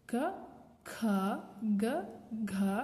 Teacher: ಮೊದಲನೆದಕ್ಕೆ ಹೆಚ್ಚು ಉಸಿರಿನ ಅವಶ್ಯಕತೆ ಇರುವುದಿಲ್ಲ ಎರಡನೆದಕ್ಕೆ ಮತ್ತೆ ನಾಲ್ಕನೆದಕ್ಕೆ ಹೆಚ್ಚು ಉಸಿರಿನ ಅವಶ್ಯಕತೆ ಇರುತ್ತೆ